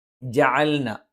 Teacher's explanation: ജ നാവിന്റെ മദ്യം മേലെ അണ്ണാക്കിൽ സ്പർശിച്ചുകൊണ്ടാണ് നാവിന്റെ മുൻഭാഗത്തോട് ചേർന്നു നിൽക്കുന്ന മദ്യമാണ് മേലെ അണ്ണാക്കിൽ സ്പർശിക്കുന്നത് അയൻ തൊണ്ടയുടെ മധ്യഭാഗമാണ്